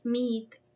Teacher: it is produced in the front and the tongue is high and our mouth is relatively close. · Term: long sound e